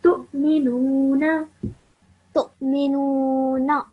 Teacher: Where Hamza has a sukoon on top of it, you produce a slight jerk sound.